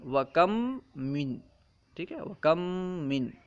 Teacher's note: مین میں بھی پہلا حرف میم ہے، تو پہلا میم یعنی کم میں جو میم ہے یہ ساکن ہے، اس کے بعد ایک متحرک میم آیا، اسی وجہ سے پہلے میم کو دوسرے میم میں ملا کر ایک مشدد حرف بنا دیا گیا، کم من۔ ٹھیک ہے، اب پہلے میم کو نہیں پڑھ رہے ہیں بلکہ دوسرا میم مشدد ہے، بس اسی کو پڑھ رہے ہیں۔ · میم ساکن کے بعد میم آ جائے تو وہاں ادغام شفوی مع الغنہ ہوگا۔ مثلا وَكَم من۔